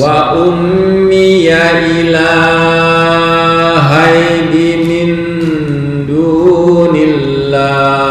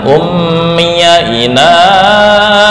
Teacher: ila ini hanya 1 alif atau 2 harokat. Jangan ummiya ilahai, ya itu kepanjangan.